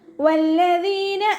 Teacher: വല്ലദീന വാവ് ഉച്ചരിക്കുമ്പോൾ ചുണ്ടുകളൊന്ന് സർക്കിൾ ചെയ്ത് കൊടുക്കുക. ലാമിന് ശ്രദ്ധ വന്നിട്ടുണ്ട്, പക്ഷെ മണിക്കരുത്. മണിക്കാതെ കനം കൊടുത്തിട്ട് ഉച്ചരിക്കുക